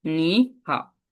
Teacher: যখন একটা যেমন নি হাও, এই দুইটা দুইটা শব্দে কি একসাথে দুইটা কি থার্ড টোন আছে, থার্ড টোন থাকলে আমরা প্রথম টোনটাকে আমরা সেকেন্ড টোন ইউজ করবো